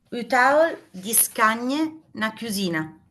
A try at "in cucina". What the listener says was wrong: No, in cucina, non c'è la I perché finisce quindi sarebbe in cucina. Perché non c'è la I? Perché non c'è la I? Perché non c'è in cucina? Perché la parola che viene prima, cioè scagne, termina con vocale.